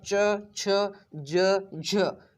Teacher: इनको बोलने में भी संघर्ष होता है, और ये स्पर्शी होते ही हैं, इसलिए इनको स्पर्श संघर्षी भी बोला जाता है